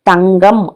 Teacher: உயிரெழுத்துகளோட நடுவே வரும் பொழுது, மெல்லெழுத்துக்கு பின்னாடி வரும் பொழுதெல்லாம் எப்படி ஒலிக்குதுன்னா ஜி போன்று